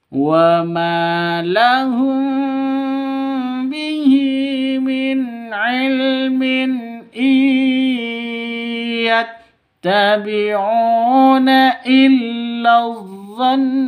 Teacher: Iyattabi'una illa dhann. Nun tasydid guna musyaddada, dengung dua ketukan ya. Ditahan dua ketukan jika berhenti. Ketika berhenti ini dhann, dua ketukan seperti itu.